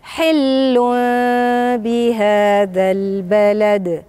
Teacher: بهذا باء. يبقى انا عندي النون الساكنه دي اللي هي في التنوين هتتقلب تبقى ميم، عشان كده بتسمى إقلاب، بتتقلب ميم. عشان كده انت شايف ايه الميم الصغيرة اللي فوق عندك هنا واضحة اهي فوق اللام، وبعدين بخفيها وبعمل صوت الغنة.